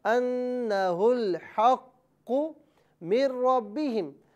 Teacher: نون ساکن کو را میں ہم ملائیں گے اور یہاں نون ساکن کی آواز نہیں ہوگی بلکہ را کی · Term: ادغام